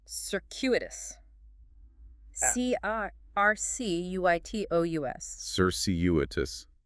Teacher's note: 4 syllables, stress on the second.